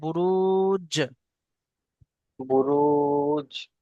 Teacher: বা এর সঙ্গে মিলিয়ে পড়ুন বুরুজ >> বুরুজ >> জি >> এখানে জিমটা হলো কলকলার অক্ষর তাই এখানে ঝাটকার সঙ্গে কলকলা করে পড়তে হবে